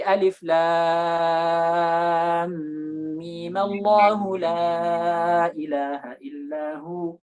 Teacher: Nah, yang memandang seperti ini, ketika mereka melihat sebab mad lazim itu sudah tidak ada, maka dibacalah dua harokat saja. Dibaca dua harokat seperti mad tabi'i.